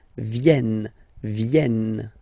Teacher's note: this classic ending ENT for the third person of the plural is here, but phonetically it doesn't exist, so you don't pronounce it